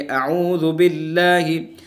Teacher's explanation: अल्लाह के लाम को बारीक पढ़ेंगे, अऊज़ु बिल्लाहि ये गलत होगा, चूँकि अल्लाह के लाम से पहले ज़ेर है तो इसलिए इसको बारीक पढ़ेंगे